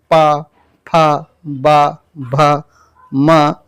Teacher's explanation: हर बार आपके दोनों ओठ टच करते हैं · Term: ओष्ठ